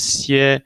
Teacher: Okay, so you could think in this case of a person lying down flat on a bed, right? The first tone we associated with flatness.